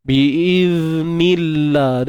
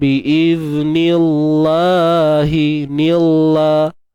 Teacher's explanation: Baik, kemudian nillah. Kalimah Allah ni sebelumnya baris bawah kan. Jadi automatik kalimah Allah jadi nipis lah.